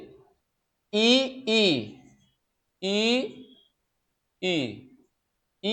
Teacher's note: इ ई च वर्ग य और तालव्यश का उच्चारण स्थान क्या है? तालु है।